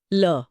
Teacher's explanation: ल बोलते समय हवा जीभ के बगल से यानी पार्श्व से निकलती है, इसलिए ये पार्श्विक है। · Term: पार्श्विक व्यंजन